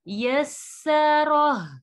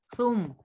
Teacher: سین میں سیٹی کی آواز آئے گی، سا میں نہیں آئے گی